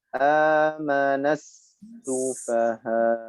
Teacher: Disertai dengan naber di ujungnya, ya, karena ada hamzah sukun. Jadi hamzah sukun harus kelihatan, yaitu dengan sedikit hentakan, atau disebut juga dengan naber.